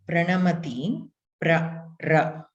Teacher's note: when you have to pronounce R, the tip of your tongue is touching right in the middle of your palate, the roof of your mouth